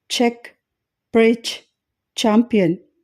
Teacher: ఛ అన్వాయిస్డ్ ఎందుకంటే ఈ శబ్దాన్ని ఉచ్చరించేటప్పుడు గొంతులో ఓకల్ కార్డ్స్ కంపించకపోవడం గమనించవచ్చు